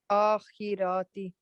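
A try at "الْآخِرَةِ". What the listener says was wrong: So don't stretch the harakats. So it'll be akhirati.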